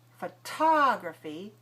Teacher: Photography, we have stress on the second syllable